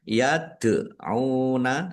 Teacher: Yaduna dal sukun bacaan qalqalah dibaca memantul.